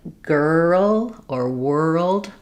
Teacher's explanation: because the R and L are right together, people don't always realize there's still a sound in between them. As we glide from the to the we need that or sound to happen.